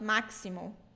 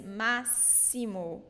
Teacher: it's not maximo. Like in English, it is maximum, but it's massimo. We pronounce it like S. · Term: S sound